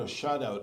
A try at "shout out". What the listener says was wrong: Shout out. Okay, it sounds like you're saying shut out.